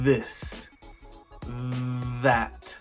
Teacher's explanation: sound replaced with either Z or D this dis that that this th sound is voiced and can be made by sticking your tongue between your teeth this that you need to allow a little air through this